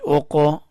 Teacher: حمزہ قاف پیش اوقو، قاف کو اٹھایا، قاف کے اوپر قلقلہ کیا